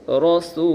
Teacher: واو مدہ ایک الف کے برابر کھینچ کر پڑھیں گے